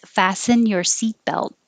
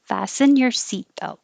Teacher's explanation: in the phrase fasten your seat belt there's no t's you don't hear any t's